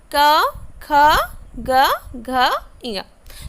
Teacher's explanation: ये जो क वर्ग के जो भी वर्ण है यानी कि क, ख, ग, घ, ङ, इसके जब हम उच्चारण करते हैं, इन वर्णों को जब हम उच्चारण करते हैं, आप क बोल के देखिए तो आपके जो आवाज़ जो निकलेगी मुंह से वो है कंठ के द्वारा, यानी कि कंठ यानी कि गला, आपके गला के द्वारा आपके जो क वर्ग के जो भी वर्ण है वो निकलती है मुंह से